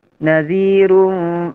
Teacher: Di situ ra-nya tebal, ya, karena berharokat dhammah. Kemudian juga tanwin bertemu dengan fa, hukumnya ikhfa, ya.